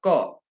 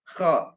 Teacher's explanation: Hampir sama dengan ko, karena itu juga tenggorokan bagian atas, hanya kho itu agak dilonggarkan. Kalau ko sudah tertumpuk, kalau kho agak dilonggarkan